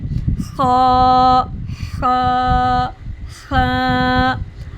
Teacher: ये आवाज़ हल्की सी रगड़ खाकर और सांस के साथ निकलती है, इसलिए इसे नर्म और वाज़िया पढ़ते हैं।